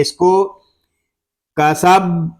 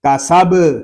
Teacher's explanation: با ساکن ہے، اس کو کلکلے کے ساتھ پڑھیں گے، یعنی اس میں کلکلہ خوب ظاہر کریں گے